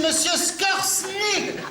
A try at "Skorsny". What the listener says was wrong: Non, pas Skorsny, Skorsny. ZS, se prononce Z, pas ce. ZS, c'est Z. Skorsny.